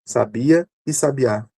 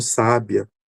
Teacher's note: Sabia, o bia é a sílaba tônica. Sabiá, o a é a sílaba tônica. E sábia, o sa é a sílaba tônica. Então a gente percebe que aqui o acento, ele tem uma característica que é distintiva.